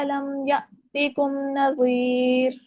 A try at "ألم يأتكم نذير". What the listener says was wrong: ذال باریک ہوگا.